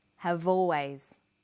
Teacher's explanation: Notice how in conversation we link the final consonant sound v with the initial vowel sound or.